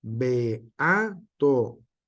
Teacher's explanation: es el encuentro vocálico que no puede pronunciarse en una misma sílaba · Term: hiato